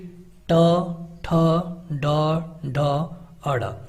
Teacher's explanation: ये तालु के अगले भाग से इनका उच्चारण होता है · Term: मूर्धन्य